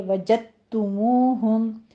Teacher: یہاں پہ ادغام ہوگا جو کہ مکمل طور پر ادغام کیا جائے گا، دال کا قلقلہ ادا نہیں ہوگا ، کیونکہ ہم مخرج حروف جب اکٹھے آ جاتے ہیں ایک